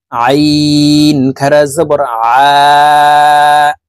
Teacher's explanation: আইন খারা জবর আ, হলকের মধ্যখান থেকে চাপ দিয়ে এই আইন হরফের উচ্চারণ করতে হবে।